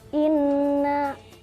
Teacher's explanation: karena terdapat huruf nun diikuti tanda tasydid, maka harus dibaca dengan berdengung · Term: gunah